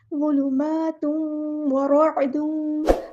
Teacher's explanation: ज़ुलुमातुन, होठों को राउंड करेंगी ताकि वाव अंदर मिक्स हो। तनवीन में वाव को मिक्स करते हुए होठों को राउंड करेंगी। ज़ुलुमातुन व रअदुन, ऐन को वाज़ेह अदा करना है, मुस्तहलक यानी मिडल क्रॉस से। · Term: इदगाम माअल गुन्ना